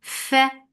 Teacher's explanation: give hams in fa for fatha open jaws.